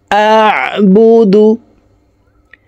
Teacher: আইন হরফকে হলকের মধ্যখান থেকে উচ্চারণ করব।